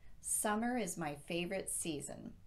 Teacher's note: would form a complete sentence summer is my favorite season so we generally use a falling intonation here just as we would if we had put a period where that comma is